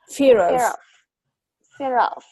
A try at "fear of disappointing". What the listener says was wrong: but when you link the sound, together, you link the word together. It's not kind of clear like that.